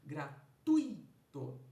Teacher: eu tenho aí um U mais forte do que um I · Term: vogal semivogal